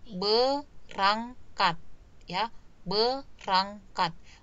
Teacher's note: Maka kan tadi seharusnya prefiksnya itu adalah ber. Tetapi di pelafalannya itu kata R-nya itu bergeser ke belakang atau ke kanan bergabung dengan kata ang. Ya, bergabung dengan suku kata ang diangkat itu.